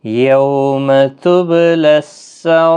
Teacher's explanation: مد متصل ہے، 4 الف کی مقدار کے برابر کھینچیں گے، را جب ساکن ہوگا وقف کی صورت میں تو باریک پڑھا جائے گا اس زیر کی وجہ سے